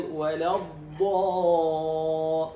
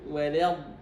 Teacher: إذن عندنا ولا مرققة والضاد مفخمة، ينبغي الانتباه. ولا والضاد مستطيلة. مستطيلة، وهي هنا مشددة، يعني عندنا ضادان في الحقيقة، ضاد ساكنة وضاد متحركة